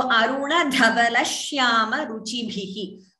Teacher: The sh sound is doubling. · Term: dvitvam